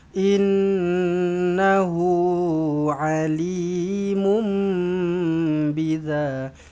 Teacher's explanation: Kemudian innahu nun sabdu dengungkan dengan dua harakat wajibul ghunnah. Innahu hu ada wau kecil selepas huruf ha baris depan ni maksila qasirah dua harakat